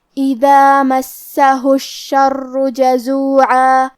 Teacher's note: کلمت الشر، یہاں شین پہ اور را پہ دونوں پہ تشدید ہے، لہذا ہمیں دونوں تشدید کو ظاہر کرنا ہے، اور کیونکہ را پہ تشدید پیش کا ہے تو یہاں را کا حکم ہے تفخیم۔ ہم حرف الرا کو موٹی آواز میں پڑھیں گے